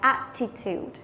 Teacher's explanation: Từ này là danh từ có ba âm tiết, trọng âm của nó sẽ rơi vào âm đầu tiên